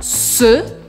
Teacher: o som é bem fechado